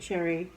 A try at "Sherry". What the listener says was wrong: Sherry, not Cherry. Sound like you said cherry.